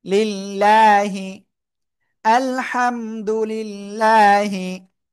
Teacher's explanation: আল্লাহ শব্দ লামের ডাইনে জের, চিকুন করে পড়তে হবে।